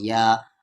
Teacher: مد کے سمبل کے بعد حمزہ ہے تو اس مد کو 3 سے 4 الف کے برابر کھینچیں گے